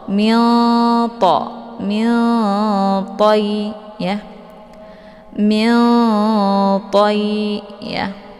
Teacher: Karena antar makharijul huruf nun dengan huruf ta itu saling berdekatan ya. Nun posisinya di ujung lidah, ta juga posisinya di ujung lidah. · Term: ikhfa aqrab